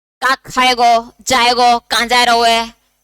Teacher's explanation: जैसे हम ब्रजभाषी हैं तो हम ओकार बहुला हैं